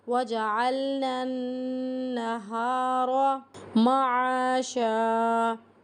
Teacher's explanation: ہمیں نون کو نون کے ساتھ ملانا ہے، ساتھ میں غنہ بھی ہو رہا ہے